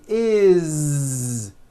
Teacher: It's always is with a voiced Z.